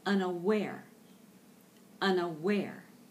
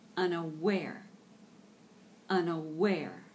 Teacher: Unaware, with the accent on the last syllable.